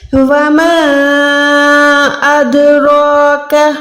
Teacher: रॉ पे मैं मुंह को गोलाई कर रही हूँ, काफ में छोड़ रही हूँ, काफ में गोलाई नहीं कर रही · रॉ पे जब भी खड़ी ज़बर आती है तो हमने उसको मोटा पढ़ना है, प्रॉपर मुंह को गोलाई करके पढ़ेंगे। उसके बाद काफ, ये वाला पतला है, ठीक है। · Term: मोटी रा